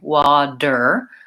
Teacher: my tongue seals off completely and that D is strong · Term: D sound